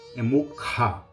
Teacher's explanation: tem essa aspiração esse som que sai lá do fundo da garganta